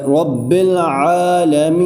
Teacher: میم کو تھوڑا سا میں کھینچ کے پڑھ رہا ہوں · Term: یا مدہ